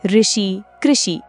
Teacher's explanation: ऋ का उच्चारण स्थान मूर्धन्य है।